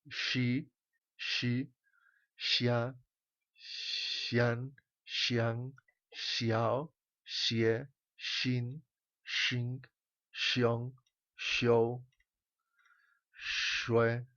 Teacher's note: La X, que hem dit que era com una SH, però amb les dents juntes, de dalt i de baix juntes i deixant anar l'aire. I aquí en la X pronunciaríem la I.